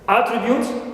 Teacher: attribute as a noun in which the first syllable is stressed